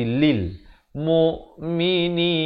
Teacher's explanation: lam mereka selalu bunyi Li bukan bunyi Le